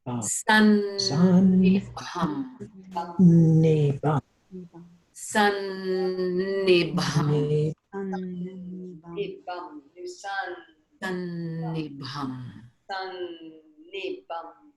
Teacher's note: We land on the first N, which is at the teeth, the dental na, and then we take off of that na for the second na.